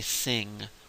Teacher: most dialects of English will just say sing without a g on the end of it